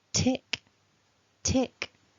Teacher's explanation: we've got a puff of air coming out so tick is quite an airy consonant really